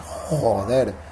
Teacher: la J española es muy atrás, ¿no? Cuando un español dice joder, la lengua se va muy atrás.